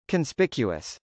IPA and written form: kənspˈɪkjuəs (conspicuous)